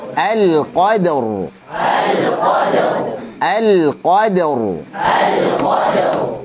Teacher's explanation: kemudian ra-nya tebal, alirkan ra-nya sedikit.